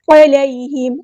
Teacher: یا لین آئی ہے تو نرمی سے موڑیں گے